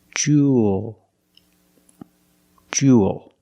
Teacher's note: You have the long oo sound plus the dark L. There's no extra vowel.